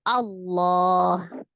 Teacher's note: karena sebelumnya huruf berharakat fathah maka dibaca tebal